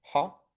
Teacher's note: this is just an ah, but because it has the rough breathing, it's ha. And then theos.